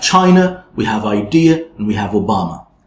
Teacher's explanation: that's the schwa sound in the end